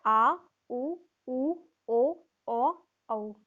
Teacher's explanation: जीभ का पश्च भाग काम में आता है।